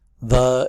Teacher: the th is often dropped for da